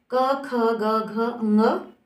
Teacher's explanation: यानी क से लेके ङ तक के पार्ट जो है वो हमारे ऊपर मुख के अंदर के तालू को टच करते हैं, अंदर वाले हिस्से को। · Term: क वर्ग